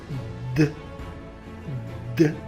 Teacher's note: فمثلا فاش غنقولوا د كنحسوا بالأحبال الصوت il vibre, alors c'est un son sonore